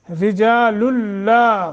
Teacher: इदगाम बग़ैर गुन्ना, नून तनवीन के बाद लाम आया, लाम मुशद्दत है।